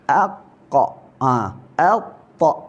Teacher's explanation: qaf dan ta ni lantunan dia macam bunyi baris atas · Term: qalqalah